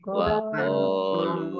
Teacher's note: Wa qalu qafatha alif mad tabi'i lam dumah wawu sukun mad tabi'i, masing-masing dibaca panjang 2 harokat.